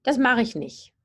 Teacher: I usually drop the T in the adverb nicht.